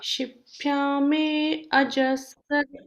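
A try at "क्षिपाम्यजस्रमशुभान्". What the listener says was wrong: Shipamyajasaram Ashubhan, if you do like that, there is always one small gap. You have to say all together. Shipamyajasaram Shubhan. Shubhan. Again, Ashubhan you cannot say. Shipamyajasaram Shubhan.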